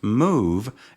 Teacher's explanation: move is pronounced with the back of the tongue in a high position and the lips rounded.